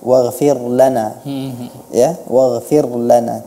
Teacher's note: harusnya huruf ra diucapkan dengan muraqqaqah, tipis, bukan dengan tebal. Waghfir lana, ya, waghfir lana, tidak seperti itu.